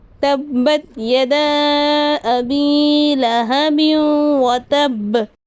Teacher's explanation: ہمسہ دوسرے کلمے میں ہے، یدا ایک کلمہ ہے، ابی دوسرا کلمہ ہے، یہاں مد منفصل ہو رہا ہے۔ یہاں 2 اڑھائی یا 4 الف کی مقدار کھینچ کر پڑھیں گے۔